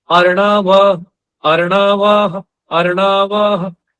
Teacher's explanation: ह आधी मात्रा के साथ बोला जाएगा